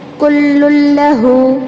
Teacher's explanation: کل لام کو لام میں ملا رہے لیکن غنہ نہیں کرنا ہے، آواز کو ناک میں نہیں گھمانا ہے